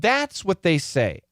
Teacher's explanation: here we're not going to stress the word what so it's going to be a schwa